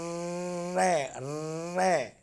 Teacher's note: रे जो व्यंजन है वो वर्तस्य व्यंजन है, अर्थात मसूडे और ऊपरी जीभ और ऊपरी मसूडे से बोला जाता है रे रे। जब ये रे का उच्चारण करते हैं तो रे जो ऊपर की तरफ दोनों जीभ हमारी मुड़ जाती है और हवा जो है ऊपर वाले मसूडे से बड़ी तेजी से टकराती है, इसलिए इसको वर्तस्य कहते हैं, मसूडे वाला व्यंजन कहते हैं।